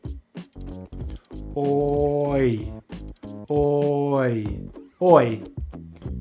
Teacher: we start with the long vowel OR, which we make by pulling the tongue into the back of the mouth, rounding the lips, and the jaw is mid-open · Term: Oi diphthong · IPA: /ɔɪ/